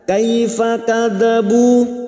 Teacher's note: bu dhamma diikuti wawu sukun 2 harokat mad tabi'i